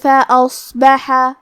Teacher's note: کلمت فَأَصْبَحَ میں حرف الصاد ہے اور صاد حروف التفخیم میں سے ہے، تو ہم یہ حرف کو بھاری آواز میں اور منہ پھلا کے پڑھیں گے. کیونکہ اس پہ جزم ہے، لہذا ہمیں صاد کو ظاہر کرنا ہے.